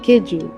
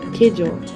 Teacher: Keju is pronounced similar to how we would pronounce the Portuguese word, but the only difference is that we say keju, which ends with a U vowel, and the Portuguese words end with an O vowel